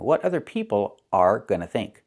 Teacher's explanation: so we don't hear r